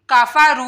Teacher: वऊ साकिन से पहले पेश आ रही है तो वऊ मदा करना है यहाँ पे